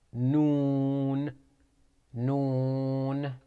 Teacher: It is pronounced from the tip of the tongue when it hits behind the upper incisors.